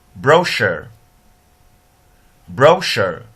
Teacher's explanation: We begin with monophthong which is the schwa, and end with monophthong U.